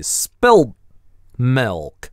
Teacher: Опять в прошедшем времени вот эта гортанная смычка на месте /t/ резко обрывает /l/ предыдущей